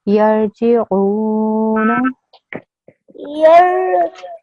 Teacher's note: You made your ayn long because of the waw madda, but your noon needs to be 1 second long because it only has a fatha